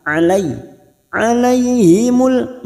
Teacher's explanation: fathah bertemu ya sukun Huruf layin kita lunakkan